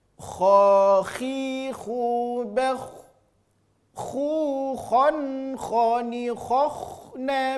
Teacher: Ini dua hurufnya, huruf kha dan huruf gha. Hurufnya keluar dari ujung tenggorokan. · Bunyi vokal huruf tebal adalah huruf o. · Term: huruf kho